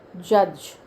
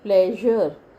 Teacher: जज बोलते हो तो आपका tip of the tongue lower teeth में फिक्स हो जाता है ना, जज। और जब आप बोलते हैं प्लेजर, तो आपका टिप ऑफ टंग और पीछे चला जाता है और राउंडेड हो जाता है।